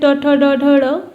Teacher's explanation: मूर्धा से उच्चारण होने के कारण इन्हें मूर्धन्य वर्ण कहा जाता है